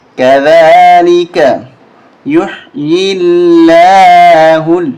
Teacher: درمیانی لام لفظ اللہ کی باریک ہوگی اس لیے کہ پہلے زیر ہے، زیر ہونے کی صورت میں باریک ہوتا ہے لفظ اللہ کا درمیانی لام۔